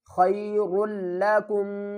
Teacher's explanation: را کو پر پڑھیں گے اور را کو لام کے ساتھ ملائیں گے